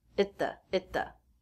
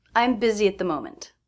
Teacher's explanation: the next word the begins with a consonant so it's a stop T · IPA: /t/